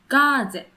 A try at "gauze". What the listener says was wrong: So that's pretty close to the German pronunciation, I think. Gaze, G-A-Z-E. In English, it's spelled G-A-U-Z-E. And we see that E as being a silent E. So we say gauze. The A-U, gauze.